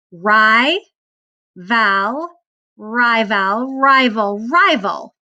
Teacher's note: that second syllable is unaccented it kind of makes the lazy vowel sound so that's that schwa that we talked about when you're finished